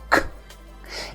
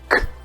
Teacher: It's not voiced, which means you do not use your vocal cords. It's like saying the sound while you're whispering.